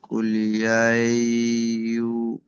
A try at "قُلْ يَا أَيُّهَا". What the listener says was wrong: কুল ইয়া ইউ বলবেন না, কুল ইয়া আইয়ু হাল। কুল ইয়া আইয়ু, হামজা ইয়া জাবার আই, ইয়া পেশ ইউ।